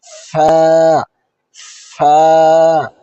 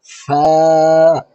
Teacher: ফায়ের মাখরাজ হলো সামনের উপরের দাঁতের আগা নিচের ঠোঁটের ভিতরে নরম অংশে লাগবে। নিচের ঠোঁটের ভিতরের নরম অংশে লাগবে।